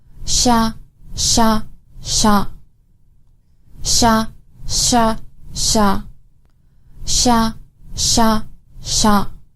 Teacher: to make the SH sound your tongue should be up near the roof of your mouth the SH sound is unvoiced